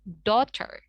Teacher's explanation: Di sini GH-nya itu tidak diubah ke dalam sound F ya. Tapi kita silent GH-nya dan AU-nya itu seakan-akan kita jadikan O. Jadinya daughter.